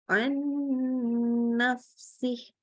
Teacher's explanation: Jadi bunyi huruf nunnya melebur ke huruf berikutnya. Jadi maksudnya kalau dia ketemu sama mim, ya melebur ke mim. · Maka hukumnya adalah idgham bil gunnah. Jadi bunyi huruf nunnya melebur ke huruf berikutnya